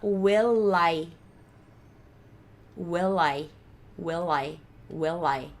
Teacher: Ele vai virar um light L.